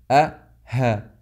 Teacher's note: from aqsa al-halq you get two voices of hamza and ha